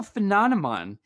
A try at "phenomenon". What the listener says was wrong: you said a phenomen